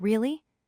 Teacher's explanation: Another pattern is a sharp rise where the pitch stays flat for most of the sentence and then rises quickly at the very end. For example, really the pitch jumps up suddenly at the end.